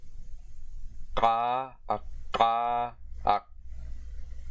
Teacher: the voiceless velar plosive consonant. In English, it's a K, but that's slightly forward and aspirated.